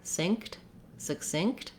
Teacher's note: when we're saying the word succinct, we do stop the air for this K. I'm not necessarily saying sick, synced with a strong K with a release of air.